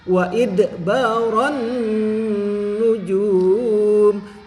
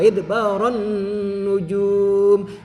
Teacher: jumnya harus panjangkan dulu sebab ada waw sukun setelah domah ya, bertemu dengan huruf hidup yang dibaca waqaf. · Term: mad arid li sukun